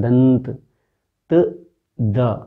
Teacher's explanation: जब आप बोल रहे हैं दंत, तो दांत से जीभ टकरा रही है। तो ये है दंत, जहाँ दांतों का इस्तेमाल हो रहा है।